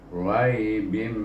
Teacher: maka kita kena baca dengan idgham ma'al gunnah, iaitu di idghamkan sebanyak dua harakah, rai bim bunyinya.